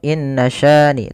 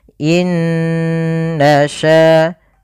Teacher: Pada lafal inna ada kembali lagi nun berharakat tasydid, maka kita namakan dengan bacaan gunnah, yaitu suara nunnya ditahan dulu. Nah, jangan langsung inna syani, tapi tahan dulu 2 harakat baru dilepas.